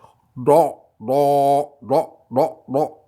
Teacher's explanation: C'est un D au fond de la gorge.